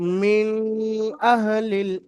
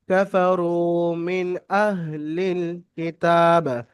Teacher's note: তানবিন নুন সাকিনের পরে হরফে হালকে থেকে হামজা আসছে, তাই নুন সাকিনের আওয়াজকে বিনা গুণায় জাহির করে পড়তে হবে।